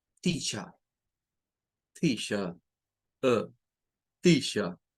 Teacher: La R no suena. Y repito, eso de no sonar la R al final de las palabras en la idiosincrasia del inglés británico o el inglés no rótico